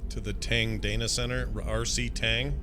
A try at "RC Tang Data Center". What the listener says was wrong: Slow down and read it again. It sounded like you said Tang Anus Center. Data Center.